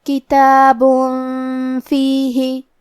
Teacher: کلمت کتابن میں با پہ تنوین پیش ہے پھر حرف الفا آتا ہے. کلمت فیہ فا حروف الاخفاء میں سے ہے لہذا ہم یہ حکم کو غنہ کے ساتھ ادا کریں گے